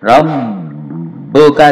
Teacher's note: Ini ba'nya tasdid ditahan dan didobli. Dobel dua huruf. Rabbuka dan ditahan dua harokat.